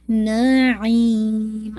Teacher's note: آئین نکلے گا آپ کا وسط الحلق سے